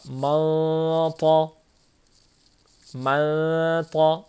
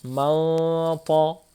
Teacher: حروف مستعلیہ میں سے طا آیا ہے نون ساکن کے بعد، تو اخفا ہوگا اور اس کے ساتھ ساتھ اخفاء مفخمہ موٹا اخفا ہوگا